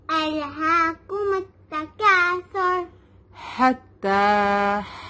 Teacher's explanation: ح کم from the middle part of the throat. حتی تا پہ تشدید ہے, اس کو ٹو ٹائمز پڑھیں گے.